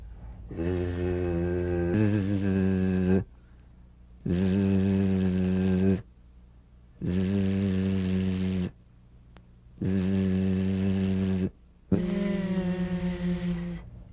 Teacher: It's in that little space that the Z sound is formed. So feel a smooth, strong vibration in the teeth and in the front of the tongue.